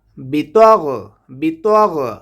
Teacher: গাইনটাকে উচ্চারণ করব কণ্ঠনালীর শেষ ভাগ হতে।